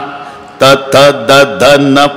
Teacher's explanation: तथ दधन, प्रत्येक वेळेला जीभ मारते का नाही धक्का दाताला, दंते आहे ते.